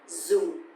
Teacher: because the tone mark here is dấu huyền, so it's going to be down a little bit.